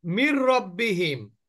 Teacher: এই জের যুক্ত মিমটা তাসদিদ যুক্ত র কে কানেক্ট করল কিন্তু নুন সাকিনকে পড়লো না এটাই হচ্ছে গুন্না ছাড়া মিলিয়ে পড়া তাহলে আমরা বললাম ইদগামের টোটাল · মিলিয়ে পড়লাম কিন্তু গুন্না হলো না এখানে নুন সাকিন আছে এখানে র আছে র টাও এদগামের অক্ষর